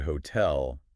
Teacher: Ah, I see. So like in the word hotel, you'd put more oomph on the tell. Bingo! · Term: word stress